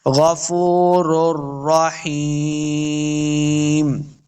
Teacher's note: حازیہ ہی یہ مد ہے، اس کو 2 حرکات لمبا کرنا ہے. آخر میم پہ وقف کریں گے تو میم کے دونوں جو پیش ہیں وہ ساکن ہو جائیں گی، صرف میم کی آواز آئے گی